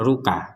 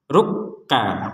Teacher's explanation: ruka jadi ditekan dulu ruk kemudian ka jadi tidak sekedar ruka kalau ruka kan enggak ada tekanan itu maka sekarang ditekan rukka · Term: tanda tasdid